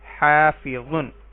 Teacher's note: الف سے پہلے ہا کے اوپر زبر ہے تو یہ الف مدہ ہے، اس کو ایک الف کے برابر لمبا کریں گے